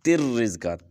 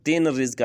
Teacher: نون کی آواز بالکل ختم ہو جائے گی، تا کو را کے ساتھ ڈائریکٹ ملا دیں گے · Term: ادغام بلا غنہ